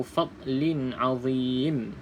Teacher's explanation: huruf dad bukan huruf qalqalah, maka kita baca dengan biasa saja. Okey, kita jangan lantunkanlah. Maksud biasa tu bukan lantunan.